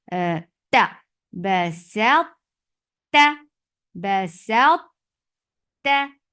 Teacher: when we are attaching seen with ta, we are making ta heavy